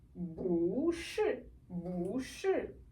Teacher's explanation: The the tone is going to change to adapt to the following word.